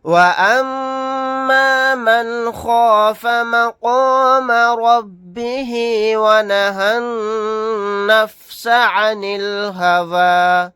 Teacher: نون ساکن کے بعد خوا آ گیا، یہاں پر اظہار حلقی کا قاعدہ ہوگا